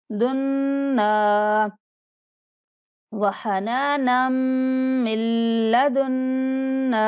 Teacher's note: جب دال کو نون سے ملانا ہے تو نون پر بھی غنہ کرنا ہے ، دنا، وحنانا من لدنا، وحنانا، نام پر غنہ اور دنا